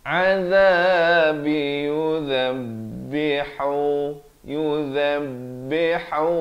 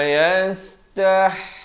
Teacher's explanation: Ha pedas di pertengahan kerongkong, dua harakat